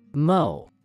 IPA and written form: moʊ (mow)